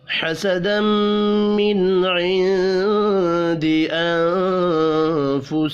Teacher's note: نون ساکن کے بعد فا ہے، یہاں پر بھی اخفاء حقیقی ہوگا